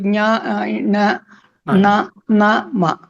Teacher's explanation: ఈ అనునాసికం ఘోషమా అఘోషమా? ఘోషమే, ఎందుకంటే వైబ్రేషన్ ఉంటుంది ఆల్రెడీ. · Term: ఘోష అనునాసికం